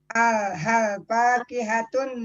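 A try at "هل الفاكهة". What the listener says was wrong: Alif lamnya nggak Ibu baca. Kalau dipisah, hal al-fakihah. Nggak boleh begitu. Ibu namanya potong kompas itu. Pilihannya ada 2. Hal al-fakihah atau halil fakihah. Nggak boleh hal fakihah. Kalau hal fakihah itu artinya nggak ada alif lamnya. Tidak boleh. Karena apa? Kita pada dasarnya mubtada itu alif lam sebagai penanda dia mubtada dengan ma'rifah gitu.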